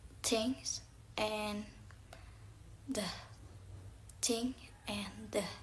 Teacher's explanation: Interdental sound produced by placing tip of the tongue between the teeth.